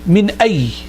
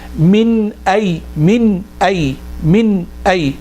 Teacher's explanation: So, but we're not going to say min ay. We're going to have to put a ghunna, not as strong as ikhfa, not as strong as yanmu, not as strong as noon and mim with a shadda, but there will be a ghunna still.